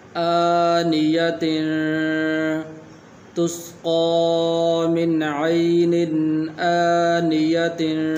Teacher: تو یہاں پر بھی تنوین کے بعد حروف حلقی میں سے الف آ گیا ہے اور اس کے اوپر کھڑی زبر بھی ہے، تو اس لیے یہاں پر بھی غنہ نہیں کریں گے۔